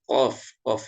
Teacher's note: ini makhrojnya adalah pangkal lidah lidah bagian belakang ya lidah bagian belakang ya menempel di bagian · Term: qof